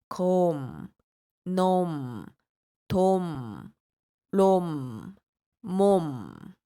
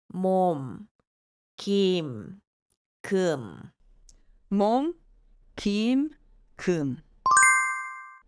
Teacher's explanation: It is finished with a closed mouth, but you can feel the nose vibrating. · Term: 미음